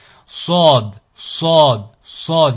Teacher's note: on est sur un son emphatique qui est grave